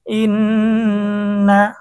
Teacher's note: হরকতের পরে নুনে তাসদীদ হয়েছে, ওয়াজিব গুন্না।